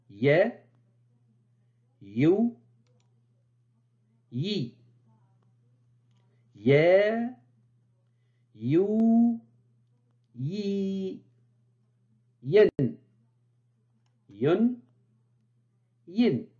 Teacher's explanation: de ce point d'articulation donc la 28e lettre de l'alphabet y se prononce au niveau du milieu de la langue qui monte vers le palais sans le toucher c'est l'équivalent de yit français tel que dans les mots y